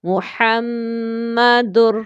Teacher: میم پر غنہ کریں گے کیونکہ میم مشدد تشدید کے ساتھ ہے